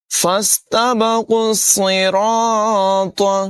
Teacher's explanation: صاد کی آواز بھی پر ہوگی، را کو بھی پر پڑھیں گے